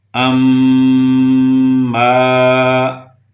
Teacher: تو اس میں میم کے اوپر شد تھی، ہم نے اس کے اوپر اپنی آواز کو ناک میں روکے رکھا، اسے غنہ کہتے ہیں۔